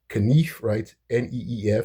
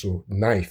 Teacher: So we don't pronounce the K when we pronounce knife.